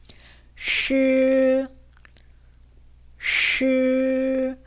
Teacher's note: 슈가 아니라 스처럼 하지만 혀가 말린 소리라는 거 기억해 주세요.